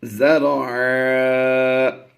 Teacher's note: دو زبر کی تنوین کو وقف میں ہم الف مدہ سے بدل دیتے ہیں